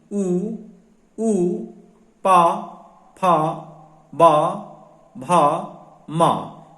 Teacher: इन वर्णों के उच्चारण में हमारे जो ओंठ हैं वो या तो गोलाई में जाते हैं या आपस में टच होते हैं। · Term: ओठों से उच्चारित